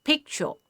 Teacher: It has two syllables in it. Right? And the first part of the syllable is stressed here. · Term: primary stress